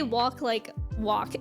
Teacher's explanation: I add in at at least a little bit more of an l sound